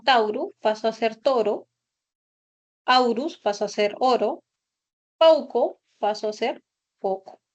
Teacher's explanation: Luego hubo el proceso contrario que también se conoce como monoptongación. del diptongo au se redujo a el monoptongo o. Entonces, palabras como tauru paso a ser toro, aurus pasó a ser oro, pauco paso a ser poco.